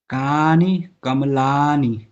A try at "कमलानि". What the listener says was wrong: कमलानि, माँ में भी आ है।